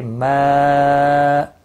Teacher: مد منفصل ہے، تین الف کے برابر کھینچ کر پڑھیں گے